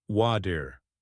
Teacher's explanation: The T in water is often pronounced as a soft D in American English.